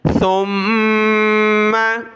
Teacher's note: सा पर ज़बान निकालेंगे और मीम के साथ मिलाया, मीम पर गुन्ना होगा